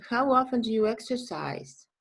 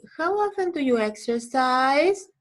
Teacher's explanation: all of these questions have falling intonation because they are WH questions. In English, information questions have falling intonation.